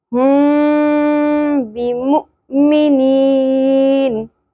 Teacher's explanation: क्योंकि मीम साकिन के बाद हर्फ बा आ गया, तो जब भी मीम साकिन के बाद हर्फ बा आता है तो मीम साकिन की आवाज़ छुपा दी जाती है और गुन्ना भी किया जाता है